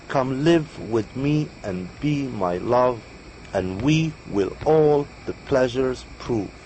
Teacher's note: will all the pleasures prove right so it's four and four unstressed stressed unstressed stressed syllable